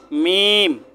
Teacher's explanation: দুই ঠোঁটের শুকনা জায়গা থেকে উচ্চারণ করবেন মিম